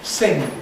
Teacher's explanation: used to end in a velar plosive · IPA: sɪŋg